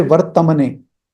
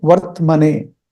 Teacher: The ta is half. The t is not having a after that.